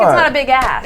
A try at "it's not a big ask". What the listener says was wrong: I think ass. You have that Belgium Southern accent. I don't think it's a big ass. That's what it sounded like.